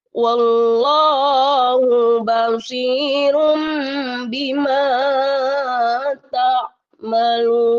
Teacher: ubah suara N menjadi M atau iklab. Nun sukun atau tanwin dibaca iklab jika bertemu dengan huruf ba.